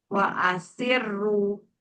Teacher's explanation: Jadi dia meskipun sebelumnya kasrah tapi tebal ya untuk rnya.